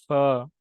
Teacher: فا، فا یہ اس کا مخرج ہونٹ ہے، یہ ہونٹوں سے ادا ہوتا ہے۔ فا، فا، جب ہمارے اوپر والے دانت نیچے والے ہونٹوں سے لگتے ہیں، ہونٹوں سے لگتے ہیں، تب یہ فا ادا ہوتا ہے